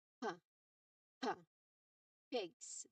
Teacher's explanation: Remember, no throat vibration for this sound. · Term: P sound